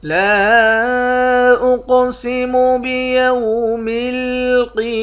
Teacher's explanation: لام کے بعد الف ہے، اس الف کے اوپر مد ہے، اس مد کو 3 الف کے مقدار کھینچ کر پڑھتے ہیں۔ قاف کو موٹا بھی پڑھیں گے، قاف پر قلقلہ بھی کریں گے۔ قاف موٹے حرف میں سے بھی ہے اور قلقلے والے حرف میں سے بھی ہے۔